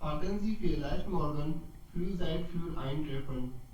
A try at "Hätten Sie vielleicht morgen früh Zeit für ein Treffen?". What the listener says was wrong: सो हैटन बोलना है इसको, हैटन, हटन नहीं बोलना है, हैटन। ओके, हैटन।